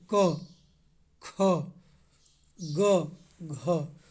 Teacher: क में कम समय लगा, ख में कुछ ज़्यादा, ग में कम, घ में ज़्यादा। तो पहला और तीसरा आपका प्रत्येक वर्ग का आपको अल्पप्राण है।